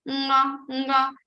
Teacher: You are having some vibrations in your throat, also some vibrations in your nose. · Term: nasal consonant